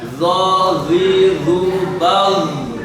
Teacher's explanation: kalau zo itu ujung lidah, ujung gigi depan atas.